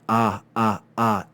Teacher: the sound is made further back in your throat with your mouth open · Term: alpha